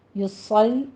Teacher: صاد کو پر پڑھنا ہے، آگے لام باریک کر دینی ہے